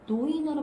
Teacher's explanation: 리을이 단어의 첫머리에 올 때에는 리을이 니은으로 변한다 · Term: 리을 두음 법칙